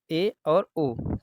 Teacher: तो ये समृत हो जाएगा ठीक है अर्ध समृत क्या है जिसमें मुख द्वार आधा बंद रहता है